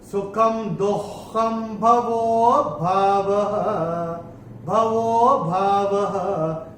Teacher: अवग्रह का मतलब है इसमें विलुप्त अ होता है, तो वो को थोड़ा सा खींच के बोलेंगे